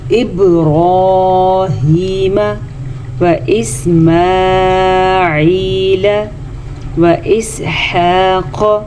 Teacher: با پہ کلکلا ہو رہا ہے، با ساکن ہے تو با کے اوپر کلکلا ہوگا